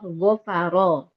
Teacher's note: kita mulai dari huruf ro yang dibaca tebal